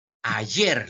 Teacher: Ayer, la mayor fuerza de voz en yer. Ya, eso es el acento prosódico.